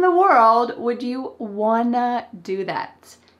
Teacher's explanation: made a common English reduction, which is, want to, becomes, Wanna.